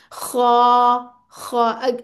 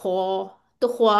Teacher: होंठ गोल नहीं होने चाहिए बल्कि आपने मुंह खोल के पढ़ना है इसको